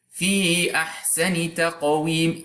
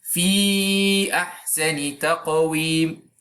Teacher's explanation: You have the option to either keep the basic lengthening of 2 units of time for ya, fi, or to lengthen it for 4 or 5 units of time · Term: disconnected mad